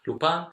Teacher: Lupaan, yes, the V becomes a P.